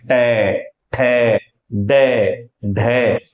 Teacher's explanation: ट में जीभ उल्टा घूमकर थोड़ी और ऊपर टच हो रही है · रही है आप बोल के देखेंगे ट ठ ड ढ तो जीवा आपकी मूर्धा को स्पर्श कर रही है इसलिए इन्हें कहते हैं मूर्धन्य व्यंजन · टे, ठे, डे, ढे, तो जिह्वा आपकी मूर्धा को स्पर्श कर रही है